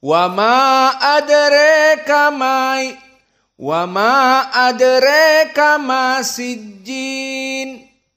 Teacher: Maka dibaca dengan qasr dan al-imalah al-kubra. Jadi qasrnya dia mengikuti Abu Ja'far dan Ibnu Katsir, dan al-imalahnya mengikuti Al-Kisai.